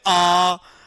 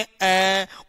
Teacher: तो आ में ज्यादा समय लग रहा है और अ में समय कम लग रहा है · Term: दीर्घ स्वर